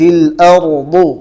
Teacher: قاعدہ ہے کہ را ساکین سے پہلے جب زبر ہو تو را کو پور پڑھی جاتی ہے